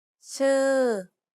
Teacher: You want to make a U sound, but instead of rounding your lips, try spreading them instead. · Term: unrounded U